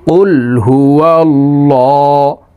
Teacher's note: এখানে ল বলতে হবে, কারণ আল্লাহ শব্দের আগের হারফে জবর অথবা পেশ হইলে এই লামকে ল অর্থাৎ মোটা করিয়া পড়িতে হয়